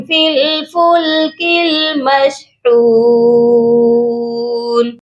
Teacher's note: فا کو لام کے ساتھ ملائیں گے، درمیان میں الف اور یا کو ہم نہیں پڑھیں گے، اور کاف کو بھی اگلی لام کے ساتھ ملائیں گے، اس کے درمیان میں بھی الف ہے، خالی الف ہے، اس کو ہم چھوڑ دیں گے۔